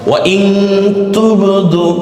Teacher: ইন না বলে আমরা ইং বলছি